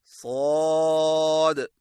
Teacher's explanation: स्वाद की अदायगी में जुबान की नोक को सामने वाले नीचे के 2 दांतों के किनारों से मजबूती से लगाएं और जुबान की जड़ को तालू की तरफ बुलंद करें